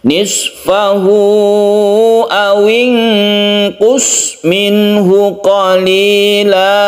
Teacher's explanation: nun mati bertemu dengan qaf, kita baca ikhfa hakiki, kita samarkan